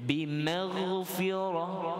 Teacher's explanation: Yang tebal ghain saja, yang lain semua nipis. Ra yang tu tebal lah, ra fathah.